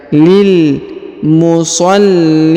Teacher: huruf lam yang bertasdid Ya ditahan dan ditekan